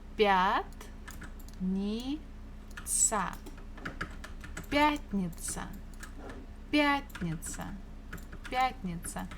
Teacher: Stress falls on я.